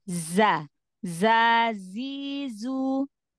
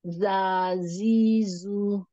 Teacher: nanti sofirnya itu keluar dari celah antara Gigi atas dan Gigi bawah